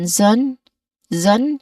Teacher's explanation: the letter S spelling here, it should be pronounced as a buzzing sound